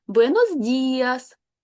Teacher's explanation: Ні, звука и немає в іспанській мові. І залишається і, а от д перед ним твердий.